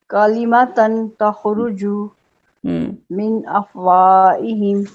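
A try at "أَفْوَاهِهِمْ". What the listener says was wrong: نہیں بہت لمبا نہیں کرنا. افواہہم.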